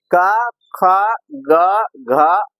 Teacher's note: क ख ग और घ का उच्चारण जो होता है केवल कंठ से होता है